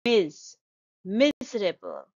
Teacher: the stress is on the first syllable shown by the arrow